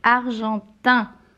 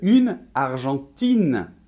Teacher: Un argentin, le masculin, on ne va pas entendre de N.